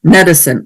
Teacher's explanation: it's not medicine with the e, but it's medicine, a schwa